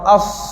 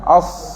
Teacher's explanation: masa kita sebut huruf sad, hujung lidah kita kat bawah, tapi pangkal lidah kita ke atas. As. Jadi masa kita sebut an ni, bayangkan kita nak sebut huruf sad.